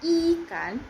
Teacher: I dilafalkan dengan lidah posisi tinggi depan bibir agak terlentang